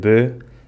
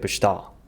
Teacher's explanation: a very typical feature of the Azorean accent, which are the more closed vowels. Very closed indeed.